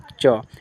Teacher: च का उच्चारण स्थान तालू च आप बोल के देखिए आपका जो जीव है ऊपर जाकर